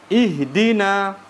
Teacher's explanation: Lantas masuk ke huruf da, ya. Huruf da dikasrohkan, maka dia adalah ya huruf yang tarkik